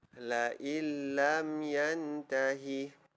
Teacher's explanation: Sepatutnya bacaan dia la in lam. Tapi disebabkan hukumnya idgham bila gunnah, kita masukkan. Tiada sudah bunyi nun. In. Tiada sudah in.